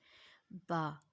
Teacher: با، دونوں ہونٹوں کے تر حصے ملانے سے.